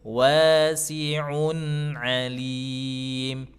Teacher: Idhar itu cara bacanya, ilhar, cara bacanya adalah dengan cara dijelaskan sukunnya tapi tidak diputus